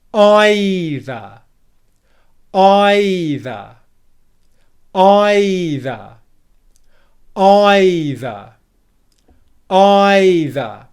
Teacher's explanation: Okay, for now, just make sure that you're stressing the first syllable, which means that it's louder, æ.ðə, longer, æ.ðə, higher in pitch, æ.ðə, and produced with more force, æ.ðə. The is really weak, it's quiet, it's unstressed, and we just move through that syllable very quickly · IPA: /ˈaɪ.ðə/